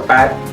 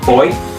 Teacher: In P for pat, is voiceless because there is no vibration, while in B, as in boy, is voiced because the vocal cords are vibrating.